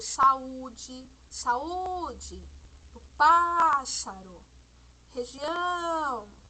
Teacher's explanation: Perceberam que a sílaba tônica que demorou mais para ser pronunciada foi o U de saúde, o pás de pássaro e região, que é o ão